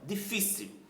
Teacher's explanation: Qual é a sílaba mais forte? A penúltima, fi, não é?